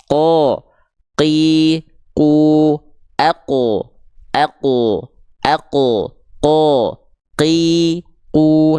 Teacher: Nah, di mana huruf qaf dilafalkan kelihatan dia menempel ke langit-langit yang warna pink, ke langit-langit yang paling dalam, teman-teman sahabat-sahabat sekalian, alias langit-langit yang lunak